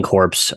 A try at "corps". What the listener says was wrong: Not You said corpse. We're talking core. Corpse.